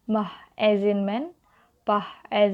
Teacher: The verse is bilabial. Here the obstruction is created using both the upper and lower lips. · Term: Bilabial consonants